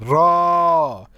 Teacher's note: जिनका उच्चारण करते समय जीभ में कंपन होती है उन्हें प्रकंपित व्यंजन कहते हैं। र, तो आप देखिए र बोल के देखिए, आपका जीभ थरथराने लगेगा, और इसको लुंठित व्यंजन भी कहते हैं।